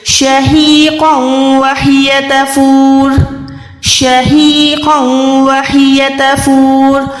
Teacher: شہیقا وہی تفور، شہیقا وہی تفور، قوف موٹا ہے، واو کے ساتھ ملا ہوا ہے تو یہاں پر ادغام گننے والا ہے، یہاں پر گننا کریں گے۔